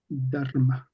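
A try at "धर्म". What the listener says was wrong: Dharma. Very good.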